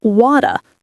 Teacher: In Australian English, it's wada, relaxed and open.